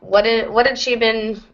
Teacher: Like you drop an H and reduce the A to just Yep. Yep, we would reduce the vowel to the schwa and drop the H entirely